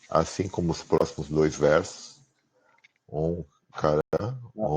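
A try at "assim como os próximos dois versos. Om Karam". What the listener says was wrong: Não, tem um ponto aí. Fala esse verso começando com Yad, assim como os próximos dois versos. Ponto. Om Karam, Om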